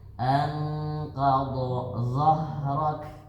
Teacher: Ketika za itu ditekan biar keluar desisnya sedikit